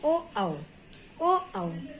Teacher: फिर ओ आओ, ओ आओ, कंठ और ओष्ठ, इनका उच्चारण स्थान है कंठ और ओष्ठ, कंठ माने होता गला, ओष्ठ माने ओठ, तो इनका उच्चारण स्थान है गला और ओठ, इनका वर्ग का नाम है कंठोष्ठ।